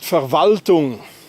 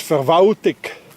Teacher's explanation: Anybody hears an L? No, it disappeared.